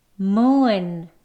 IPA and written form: muːn (moon)